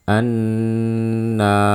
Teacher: yang kita baca tebal hanya r-nya saja